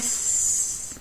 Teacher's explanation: هسا هاي الأحبال الصوتية في بعض الأصوات لما تلفظيها بصير في vibration، اهتزاز بالأحبال الصوتية، وبعض منها بتحسي في هواء بيطلع صح، لكن ما في اهتزاز